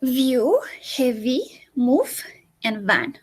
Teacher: So it is not pronounced like in Spanish with both lips. It is pronounced with our upper teeth and our lower lip. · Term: The v